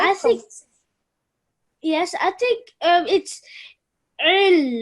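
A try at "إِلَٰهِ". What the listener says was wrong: It's a hamza. It's not an ayn. Il. Illahi.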